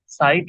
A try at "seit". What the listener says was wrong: সাইট না, এটা জাইট। জাইট জাইট